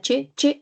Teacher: Si usted pronuncia la che, che, primero se pega todo así, che, y luego da paso al aire. Entonces se dice como una oclusión y una fricación de forma simultánea que se llama africado. Y el único sonido es la che, nada más.